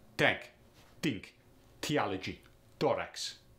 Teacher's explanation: if it's a voiceless th on the other hand it becomes a hard t